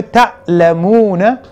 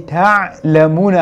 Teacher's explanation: le terme ta'lamouna et ta'lamouna avec aïn, la différence c'est au niveau de hamza et aïn